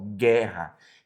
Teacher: Perceba que eu tenho um som só do G e do E, não é verdade? O Ue fica sem som porque ele faz parte do G. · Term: dígrafo